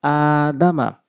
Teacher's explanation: দাল জবর দা, মিম জবর মা, দুইটি হরকত দ্রুত পড়তে হবে, আলিফটি টেনে পড়তে হবে। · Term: মধ্যে বদল